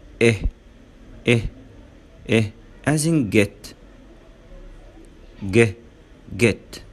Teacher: بالنسبة لشكل الشفتان بتكون farther apart. farther apart معناها منفصلة عن بعضها، than far a يعني منفصلة عن بعضها أكتر من الساوند a. and relaxed، and relaxed معناها أن هي مرتخية.